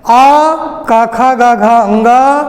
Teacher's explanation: इन वर्णों का उच्चारण स्थान कंठ है